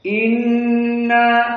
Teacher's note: Nun musyaddadah gunah dari hidung